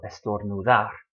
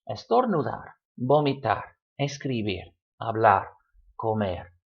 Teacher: Estornudar, to sneeze, all stressed on the last syllable, estornudar.